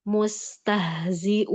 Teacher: kalau rohowa dia mengalir sempurna dan dia ini rohowa sin sama ha